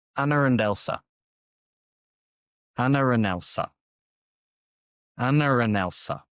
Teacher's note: this is definitely intrusive because there is no R, but we're adding the R · So there's no R when you write it down, but it appears, and it's very intrusive when it goes there. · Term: intrusive R